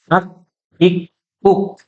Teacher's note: tanda sukun maka dia ada percikan udara yang keluar